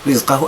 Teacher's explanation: فقدر عليه رز ري الراء مرققة بسبب أنها مكسورة. رز الزاي من حروف الصفير يعني أقف عنده ولا أقلقله، ما نقولش رز لا، رزقه أحباب الكرام.